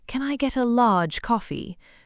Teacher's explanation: The R almost disappears and the vowel gets a little longer instead.